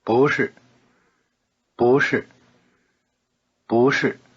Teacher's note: Notice the rising tone on 不.